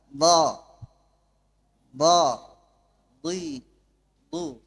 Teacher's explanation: ضاد من حافة اللسان. حافة معناه جوانب اللسان من اليسرى ومن اليمنى. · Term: مخرج الضاد